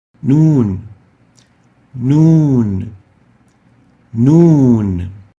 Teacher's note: the oral articulation for the Noon is basically by bringing the tip of the tongue opposite to the gum of the upper incisor